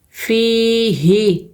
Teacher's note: یا مدہ ہے، دو حرکت کھینچیں گے، فی، ہا زیر ہی، ہا کو نہیں کھینچنا ہے، ہا کے نیچے زیر ہے، زیر کو ہم بغیر کھینچے پڑھتے ہیں